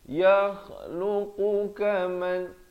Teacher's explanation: Yakhluqu kaman, qu pula dipangkal lidah. · kha pula di hujung kerongkong